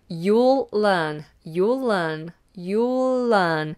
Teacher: You'll learn. And that L carries over into the word learn.